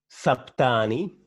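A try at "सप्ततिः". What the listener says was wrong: Saptani, where is ni? Not sapti. Saptatihi.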